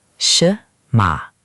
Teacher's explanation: The first one falls hard. The second one dips. Shmma. You switched from a falling tone straight into a dipping tone without flattening either one.